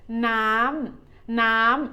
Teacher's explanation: น้ำ means water. It is a falling tone.